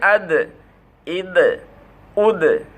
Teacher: আমরা বলছিলাম 5টা অক্ষর কলকলা, তার মধ্যে একটা দাল আছে, যদি সাকিন হয় তবে কী হবে, ধাক্কা লাগাই পড়তে হবে, এটাকে বলে আরবিতে কলকলা